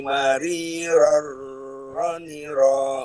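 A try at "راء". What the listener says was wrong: Jangan ditahan. Mari roroni ro. Tidak ditahan. Huruf ro. Jangan ditahan. Mari roroni ro. Jangan ditahan. Ditahan begini. Mari roroni ro. Bukan. Sifat ar-rohwa.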